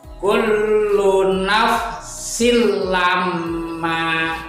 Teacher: Tetapi bedanya dengan idgham bihunah itu yang idgham bilahunah nggak usah pakai dengung